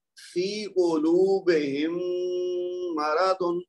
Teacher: پہلی میم ساکن کو دوسری میم متحرک میں ملا کر یعنی ادغام کر کے دو حرکت کا غنہ کے ساتھ پڑھیں گے. غنہ اس میں بھی ہوگا جس طرح پہلے ہوا ہے, لیکن اس میں کیا تھا, اس میں با کے پہلے میم تھا, اب میم سے پہلے میم ہے, تو میم کی میم میں آواز مکس ہو جائے گی. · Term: ادغام شفوی